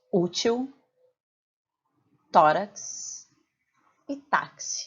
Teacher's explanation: em todas essas palavras a sílaba tônica está na penúltima sílaba portanto a gente chama ela de paroxítona